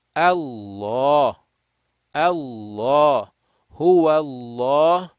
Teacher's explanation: If the word Allah is preceded meaning the effective letter before it, if that preceding letter has a fatha or a dhamma, the lamul jalala or lam of Allah will be read rounded or heavy